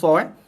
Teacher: hujung lidah kita akan menyentuh bahagian gigi kita yang bawah, bahagian belakang gigi sebelah bawah. Bahagian belakang gigi sebelah bawah, gigi hadapan yang belah bawah, bahagian belakang dia. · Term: huruf sa